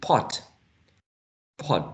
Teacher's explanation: the same thing in pot pot the initial sound pot is aspirated